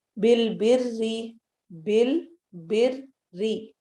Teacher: رو چونکہ کسرہ کے ساتھ ہے اس لیے اس کو ہم باریک پڑھیں گے